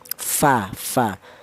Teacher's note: Lalu huruf fa ini menggunakan bibir bawah tapi bibir bawah yang bagian dalam ya. Huruf fa ini bibir bawah bagian dalam menyentuh ujung gigi seri atas. Jadi keluarnya huruf fa itu berasal dari bibir bawah bagian dalam sing jero menyentuh ujung gigi seri atas ya.